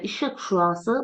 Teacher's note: İşıq şüası, burada hamısı kar samitdən ibarət olur